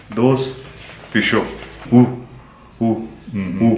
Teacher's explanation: So this is the pure U, and there's no diphthong like food, boot, rule.